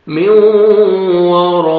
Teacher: را کو فتح ہے، را کو موٹا کر کے پڑھیں گے